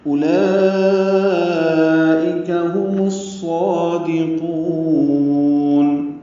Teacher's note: اولئک میں مد متصل ہے، کھڑا زبر کے بعد حمزہ آنے کی وجہ سے لمبا کریں گے